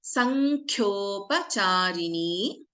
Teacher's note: Sankhyopa, Kha is a Mahaprana in this case.